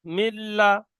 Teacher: নুন সাকিনের পরে হরফে ইয়ার মালুনের 6টি অক্ষরের মধ্যে লাম এসেছে, তাই নুন সাকিনকে বিনা গুণনায় মিলিয়ে পড়তে হবে